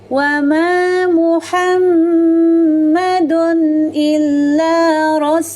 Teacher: ketika melafalkan itmamul harakat dhamma dengan memonyongkan kedua bibir tanpa merapatkannya